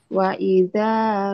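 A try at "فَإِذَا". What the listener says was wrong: Bukan wa, fa. Fa, hati-hati. Fa. Faida faida rakibu.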